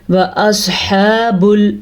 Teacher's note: سواد کو پر پڑھنا ہے کیونکہ سواد حروف مستعلیہ میں سے ہے